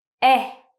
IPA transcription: e